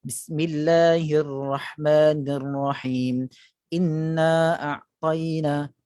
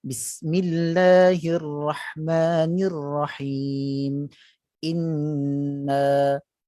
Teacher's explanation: Jadi sepatutnya inna 2 harakat. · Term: gunnah